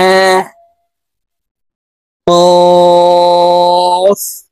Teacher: কফ হরফ জিহ্বার গোড়া তার বরাবর উপরের তালুর সঙ্গে লাগাইয়া উচ্চারণ করতে হবে।